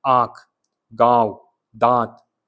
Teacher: अब चंद्र बिंदु अनुनासिक में क्या होगा, यहाँ पे सांस नाक और मुंह दोनों से निकलती है आपकी